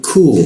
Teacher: Ada waw yang kita panjangkan, lu ku, huruf ku disikut tenggorokan, lidahnya kita turunkan. Ku ada hembusan udara ketika membaca ku.